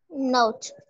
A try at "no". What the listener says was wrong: Again, it's no. Not note, it's no. Again, no.